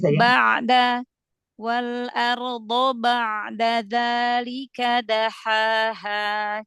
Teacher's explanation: huruf ain dialirkan sedikit ya kasih sifat bainiah biar tidak seperti hamzah